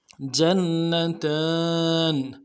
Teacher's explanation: تا کے اوپر کھڑا زبر ہے، ایک الف مدار میں کھینچیں گے، نون کو نرمی سے ادا کریں گے